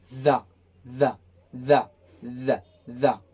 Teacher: voiced sound, ये vibrate होता है